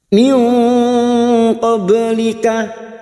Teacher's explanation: ba sukun yang mati asli di tengah kalimat, jangan lupa dipantulkan qalqalah sugro.